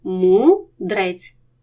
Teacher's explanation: до наступного складу наприклад в слові мудрець поряд дзвінкий дий і сонорний ри сонорний перетягне до себе дзвінкий дий вони будуть в одному складі